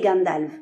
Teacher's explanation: le F en fin de mot a valeur de [v] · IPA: [gandalv]